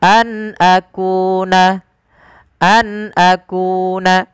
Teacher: an akuna, an akuna, an. Suara nunnya diperjelas karena dia ada bacaan berupa izhar halqi. Nun ketemu dengan hamzah dijelaskan suara nunnya an akuna, an akuna, tidak ada penahanan an akuna, tidak, tapi an akuna.